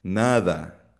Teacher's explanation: So for example, ang word na nada, nada, so kung mapapansin niyo hindi ko siya binigkas ng nada na madiin. Kapag ang D ay nasa pagitan ng dalawang vowels, ah, mas soft siya. Okay? Hindi siya masyadong madiin na D. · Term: soft D